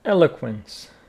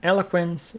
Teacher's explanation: Eloquence. Stress on the first syllable.